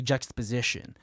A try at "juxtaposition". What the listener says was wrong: I don't think you're supposed to pronounce the X in that word. Just the position. Just the position. X's are usually not pronounced with like a hard verbiage.